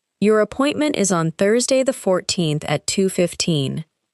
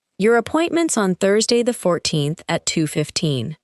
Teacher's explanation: The words appointment is become appointments and on Thursday connect smoothly. However, the numbers remain important and usually receive clear stress.